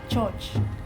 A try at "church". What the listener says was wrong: Where's your O coming from?